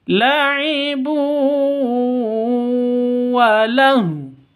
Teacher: Artinya ini disebut dengan idgham bi gunnah. Harus masuk ke wawu huruf idgham bi gunnahnya disertai dengung dua ketukan.